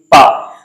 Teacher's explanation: जब तक आप दोनों ओठ को मिलाएंगे नहीं तब तक आप पा नहीं बोल सकते। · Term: ओष्ठ